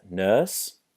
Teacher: notice here how we don't use the R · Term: nurse vowel